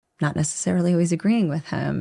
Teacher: she doesn't open her mouth a lot when she says always she kind of reduces the whole word